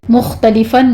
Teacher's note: مختلفاً میں خا کو ادنا حلق سے ادا کریں گے، اور آگے فن میں تنوین کا قاعدہ اظہار حلقی ہو رہا ہے۔